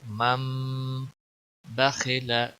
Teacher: نون کی آواز میم میں بدل جائے گی